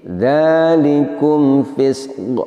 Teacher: Pada lafadz fisqun, dua huruf terakhirnya adalah, yang pertama adalah huruf sin, yang kedua adalah huruf qaf. Huruf sin ini makhrajnya adalah ujung lidah kita menyentuh atau menempel gigi seri bawah. Dan sifatnya salah satu diantaranya adalah adanya suara berdesis atau yang diistilahkan dengan istilah sofir.